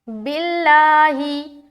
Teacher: लफ्ज़ अल्लाह का लाम यहाँ बारीक होगा क्योंकि बा के नीचे ज़ेर आ गया